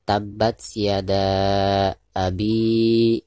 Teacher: Ketika membaca abi, maka di sini dipanjangkan 2 harokat karena dihukumi mad tabi'i. Ada huruf yang berharkat kasroh yaitu ba ya, bi di sini.